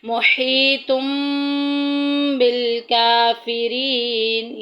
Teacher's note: ہم نون تنوین کی آواز کو میم میں بدل کر غنہ کر کے پڑھیں گے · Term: انقلاب